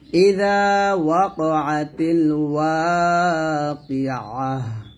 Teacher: তো এখান থেকে ভালো করে বুঝে নেন, যদি ওয়াকফের অবস্থায় তা আসে এটাকে বলা হয় গোলতা, তাই তানিজ বলা হয়। তো এই তাটা যদি ওয়াকফের অবস্থায় পান তাহলে সে তাটাকে হা সাকিন করে ফেলবেন।